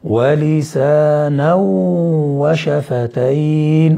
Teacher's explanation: إدغام بغنة، وهو إدغام ناقص لبقاء الغنة